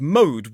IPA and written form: məʊd (mode)